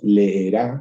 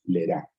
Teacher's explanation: Cuando nosotros tenemos dos vocales iguales en contacto, evidentemente no pronunciamos las dos de manera habitual. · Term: simplificaciones de vocales en contacto